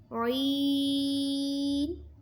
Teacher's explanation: عین حلق کے درمیان والے حصے سے ادا ہوتا ہے۔